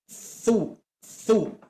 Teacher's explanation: ujung lidah nempel ke gigi seri atas